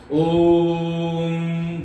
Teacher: हमारी भारतीय संस्कृति का एक बड़ा शब्द है ओम, जो मैं रोज कक्षा जब शुरू होती है तब मंगलाचरण के रूप में हमेशा बोलता हूं और हमेशा बोलता रहूंगा। ओम, जब मैं ये ओ को जब लंबा खींच रहा हूं, ओ 3 चुटकी का समय लग रहा है। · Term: प्लुत स्वर